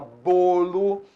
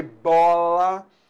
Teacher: Então bolo, o timbre é fechado. Bola, o timbre é aberto.